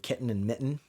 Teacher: it's opening and closing the glottis and in language it's actually called a glottal stop